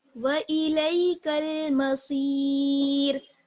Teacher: تو پھر مسیر میں را جو ہے وہ باریک پڑھی جائے گی کیونکہ صاد پر جو ہے وہ زیر ہے